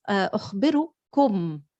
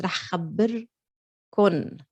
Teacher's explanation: it's pretty much always pronounced as a noon in Lebanese instead of a meme in standard. In standard Arabic, it's أخبركم or أخبركم.